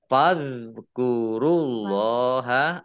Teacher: Allahnya dibaca tebal karena harokat di depannya dhammah